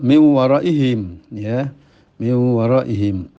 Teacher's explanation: Nun masuk ke wawu tapi nun masih ada dengungnya. Jadi tinggal satu sifat yaitu dengung yang tidak mau ditinggalkan ya.